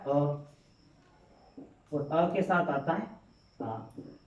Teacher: तो अ और आ का उच्चारण स्थान क्या होगा? कंठ।